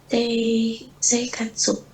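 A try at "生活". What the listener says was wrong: Seikatsu. Seikatsu. Gitu. I-nya kayak nggak kebaca. Seikatsu.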